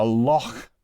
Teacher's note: the h sound is a little bit aspirated